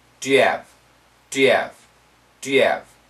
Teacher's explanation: speakers especially Americans when we say it fast when we speak quickly we can't hear the H sound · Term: cancellation